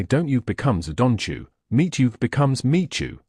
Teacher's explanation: When a word ending in a t sound meets a word starting with a y sound like you, the sounds merge into a ch sound. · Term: Assimilation